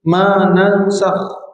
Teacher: nan dengung ikhfa masuk ke sin, ikhfa maknanya disembunyikan di sin